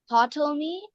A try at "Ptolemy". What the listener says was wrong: Ptolemy. The P is silent.